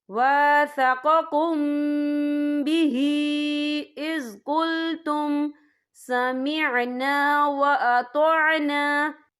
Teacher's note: میم ساکن کے بعد جو ہے با آ رہا ہے، تو یہاں پر اکفا شفی ہوگا اور ہم یہاں غنہ بھی کریں گے، اور غننے کی مقدار جو ہے 2 سے 3 سیکنڈ ہوگی۔